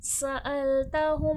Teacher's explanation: सीन में सफीर है सख्ती सीटी के साथ होगा